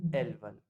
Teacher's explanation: इसमें कोई लिएजन होगा नहीं, सो आपको ज की ध्वनि आएगी नहीं